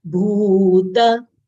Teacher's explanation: Bha is Mahapran letter. We should exhale while saying bha. It should not come out as ba.